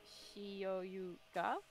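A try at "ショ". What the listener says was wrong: Close. This one is a small yo, so it's this becomes sho. Sho.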